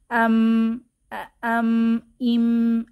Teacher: আর মিমের আরেকটা সিফাত হচ্ছে গুন্নাহ, অর্থাৎ নাক থেকে নির্গত নাকি আওয়াজে মিম উচ্চারিত হয়।